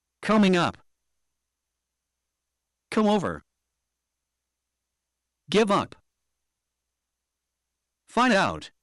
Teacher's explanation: We will stress the particles which are the up over and out.